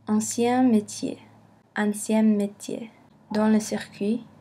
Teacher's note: La consonne au début d'un mot se répète quand elle vient après une vocale nasale. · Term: Le doublement